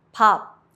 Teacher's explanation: Close your lips but don't release the air like in pop. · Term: light P